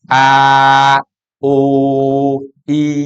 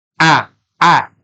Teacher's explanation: alif adalah tergolong huruf jaufi yaitu rongga mulut sedangkan Hamzah adalah huruf halqi yaitu tenggorokan